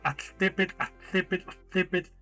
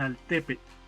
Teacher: El cambio del sonido tla a la es un cambio fonético natural que facilita la pronunciación